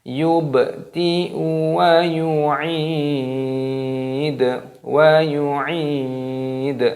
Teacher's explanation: baknya berharokat sukun, ini dimatikan, diqalqalah. Yubdi'u wa yu'id, wa yu'id, ainnya berharokat kasroh, ada ya sukun, berarti dipanjangkan matobi'i dua ketukan.